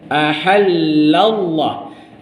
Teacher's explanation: Ha nipis, ha pedas nipis, la nipis, tapi lam kalimah Allah jadi tebal